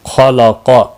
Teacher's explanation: خا اور قاف دونوں مستعلیہ میں سے ہیں، پر پڑے جائیں گے، لام ساکن کو ہلانا نہیں۔